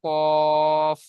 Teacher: 4 নম্বর মাখরাজ জীবের গড়া এবং তার বরাবর উপরে তালুর সাথে লাগিয়ে উচ্চারিত হয় 2 নোক্তাওয়ালা কফ।